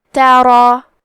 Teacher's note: کیونکہ اس کے بعد مد الف ہے اور مد الف میں پیچھے والے حرف کا حکم لیتے ہیں تفخیم میں اور ترقیق میں، تو کیونکہ اس کے پہلے حرف را کا حکم ہے تفخیم تو ہمیں مد الف کو بھی بھاری آواز میں ادا کرنا ہے